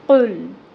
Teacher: قاف حروف مستعلیہ میں سے ہے، اس کو پر پڑھیں گے اور اس کے اوپر پیش کی حرکت ہے دمہ، تو اپنے ہونٹوں کو گول کریں گے اور اس کو ایک حرکت کے برابر ہی پڑھیں گے، 1 کاؤنٹ۔